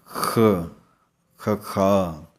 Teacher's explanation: ਅੱਖਰ ਹੈ ਖਖੇ ਪੈਰ ਬਿੰਦੀ ਇਹਦਾ ਉਚਾਰਨ ਹੈ ਖਾ ਖਖਾ ਸੋ ਇਹਦਾ ਉਚਾਰਨ ਕਰਨ ਲੱਗਿਆਂ ਜੀਭ ਦਾ ਪਿਛਲਾ ਹਿੱਸਾ ਜੋ ਹੈ ਉੱਪਰ ਵੱਲ ਨੂੰ ਕਰਕੇ ਬਾਹਰ ਨੂੰ ਆਵਾਜ਼ ਕੱਢਣੀ ਹੈ